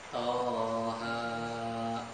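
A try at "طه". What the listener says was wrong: Toha cukup dua harokat, jangan dipanjangkan. Jangan jadi panjang ya. masih panjang, dua harokat aja.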